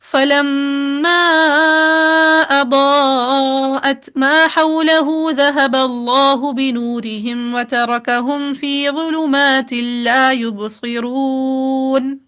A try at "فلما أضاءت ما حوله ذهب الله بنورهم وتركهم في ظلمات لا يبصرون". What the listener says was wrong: نہیں سلا نہیں کرنا تھا ہمیں.